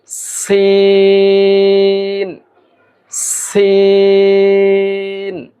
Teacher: জিহ্বার অগ্রভাগ, জিহ্বার আগা সামনের নিচের দুই দাঁতের আগার সঙ্গে লাগিয়ে এর উচ্চারণ করতে হবে। আমরা উচ্চারণ করব সিন, কিছুটা বাতাস বের হবে, এই আওয়াজ বের হবে।